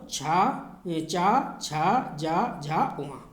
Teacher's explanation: जीभ जो है वो तालु से लगती है।